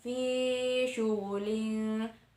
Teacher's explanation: fi di sana mad tabi'i yaitu ya sukun ya sukun didahului oleh harokat kasroh disebut mad tabi'i